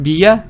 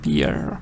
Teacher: short like a little schwa if it's British just Bia if it's American Beer do